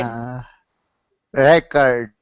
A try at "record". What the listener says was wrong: Record. So practice that R sound. That's a really important sound for you to practice, okay?